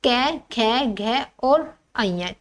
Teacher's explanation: कंठ्य इस वर्ग की सभी ध्वनियों का उच्चारण कंठ से होता है